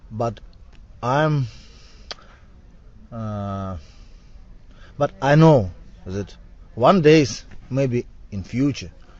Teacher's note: so he has the kind of a z sound for that for that th